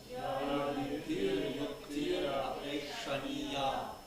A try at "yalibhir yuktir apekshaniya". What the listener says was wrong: After this yukti, basically you just connect this. Yuktir apekshaniya. Instead of saying yuktir apekshaniya, no. Yuktir apekshaniya. Yuktir apekshaniya. It's just one word, like that.